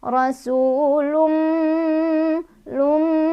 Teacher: Cara bacanya idgham itu dimasukkan, berarti tanwinnya dimasukkan ke huruf mim langsung, disertai dengan berdengung. Jadi dengung yang kerasa sampai hidung ya, ditahan, boleh 2, boleh 3, boleh 4. Rasulum lum sampai kerasa ke hidung ya. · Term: idgham bi gunnah